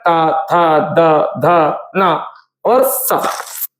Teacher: यानी इनकी ध्वनि हम जब बोलते हैं तो हमारी जीभ जो है वो दांतों में टच करती है